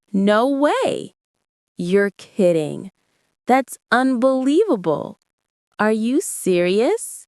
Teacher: Feel the rise in your voice when you express surprise.